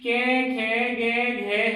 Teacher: इन सबका उच्चारण स्थान है कंठ